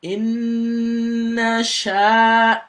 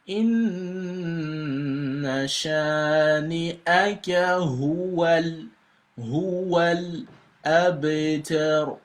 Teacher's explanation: So the sha here has a med. And it's gonna be elongated for 2 seconds.